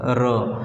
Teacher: जैसे आप र का उच्चारण करके देख लीजिए, र, तो इसमें द्विपृष्ठ यूँ लगेगा जैसे हमारी जो जीभ है वो दो बार बोल रही है